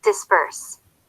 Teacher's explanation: The consonants B and P are not the same, but they sound the same here. The P, unvoiced, often sounds more like a voiced consonant, the B, when it's in the middle of a word.